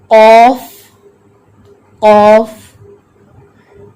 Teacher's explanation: مخرج ہے قاف کا زبان کی جڑ بالمقابل اوپر کا تالو